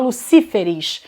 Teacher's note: Antes a sílaba forte era o lu, agora é o si.